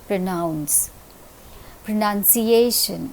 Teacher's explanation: in the word pronounce the second syllable is receiving the accent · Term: word accent